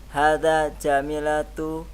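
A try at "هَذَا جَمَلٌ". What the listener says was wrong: Kalau jamilatun ada ya-nya setelahnya. Setelah mim.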